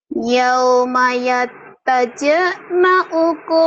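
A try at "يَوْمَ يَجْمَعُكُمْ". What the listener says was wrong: yawma yaj, bukan yataj. Yawma yaj. Yauma yaj. Yauma yaj ma'ukum li yaumil jam'i dhalika yaumut tagabun. Yauma yajma'ukum lagi.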